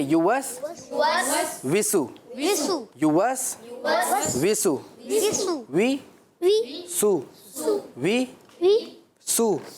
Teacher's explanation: ہونٹ گول ہو رہے ہیں پھر سیدھے ہو رہے ہیں، پھر گول ہو رہے ہیں پھر سیدھے ہو رہے ہیں